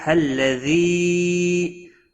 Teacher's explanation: الذی مد منفصل ہے، 3 الف کے برابر کھینچ کر پڑھیں گے